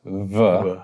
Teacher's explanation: Yeah, I mean certainly. I mean a sound by the two lips becoming very close, vuh, can definitely be a fricative sound